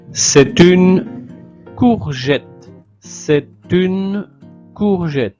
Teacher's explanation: liaison entre le t et le u